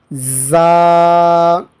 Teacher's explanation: یہ جو پیچھے ہم نے بتایا آپ کو کہ حروف صفیریہ یہ 3 حروف ہیں، تو یہ حروف صفیریہ میں سے ہیں زا۔ اس کو زبان کی سختی کے ساتھ سیٹی کی آواز نکال کے پڑھیں گے